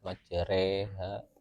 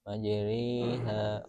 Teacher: Alif lidah pada kondisi normalnya. Imalah kubro lidah bagian tengah lebih terangkat. Imalah sugro lidah bagian tengah sedikit terangkat.